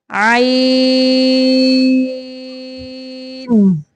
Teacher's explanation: عین، یہ دیکھیں عین زبریہ آئی. عین وسط حلق سے، یعنی حلق کے درمیانی حصہ سے